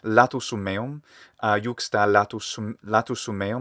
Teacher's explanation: they add a little schwa vowel or some other kind of little vowel